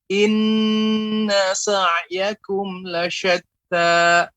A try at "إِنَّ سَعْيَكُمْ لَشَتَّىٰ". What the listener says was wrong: Ya, inna, tadi pengucapan inna jangan ada ya jeda, ya ada lambat, langsung.